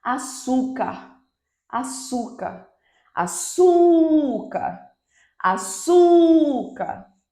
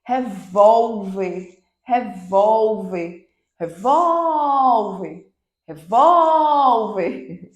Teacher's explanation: E aí você vai voltar oxítona é a última sílaba tônica paroxítona é a penúltima sílaba tônica Então eu tenho a penúltima sílaba mais forte